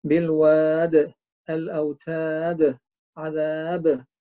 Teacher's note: هذه كلها قلقلة كبرى المفروض واحد يلتزم بها